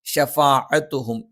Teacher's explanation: ഷ നാവിൻ്റെ മധ്യഭാഗം മേലെ അണ്ണാക്കിൽ.